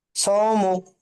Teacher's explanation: wow সাকিনের ডান দিকে যাওয়ার এসেছে, একে ওয়াউলিন বলে। ওয়াউলিন নরম আওয়াজে তাড়াতাড়ি পড়তে হয়, টান দেওয়া নিষেধ।